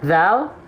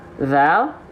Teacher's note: dilafalkan seperti ini perhatikan nih dalal kelihatan enggak dalal ya gitu dalal keluar bukan dengan cara digigit ujung lidah kita enggak digigit ya gigi si bawah enggak ikut nekan enggak ikut mencapit kenapa